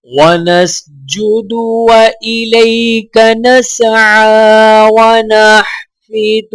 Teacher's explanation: عین کے اوپر کھڑا زبر ہونے کی وجہ سے ایک الف کے برابر کھینچ کر پڑھا جائے گا